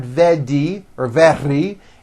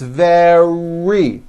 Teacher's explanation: make sure that the r sound is strong and your lips are coming forward your tongue is back and you push out the r